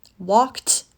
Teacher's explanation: Walk is a verb that ends in a voiceless consonant. K. K. K. I walked to the store. Walked ends in the T sound.